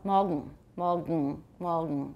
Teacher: what happens to the N when I say morgen? It assimilates to the G, the velar